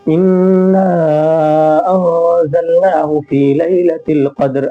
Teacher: الف کو کھینچ کر پڑھیں گے، یہ مد منفصل ہے، اس کو ہم 3 الف کے برابر کھینچ کر پڑھتے ہیں۔